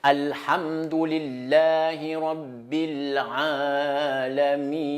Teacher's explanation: Ha et ayn, les deux lettres-là, dans la gorge toujours.